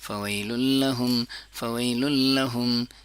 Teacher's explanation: नून का इदगाम हो रहा है लेकिन उसमें गुना नहीं है नाक की आवाज नहीं है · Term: इदगाम बिला गुनाह